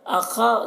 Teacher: خا کو پر پڑھیں گے، خا حروف مستعلیہ میں سے ہے،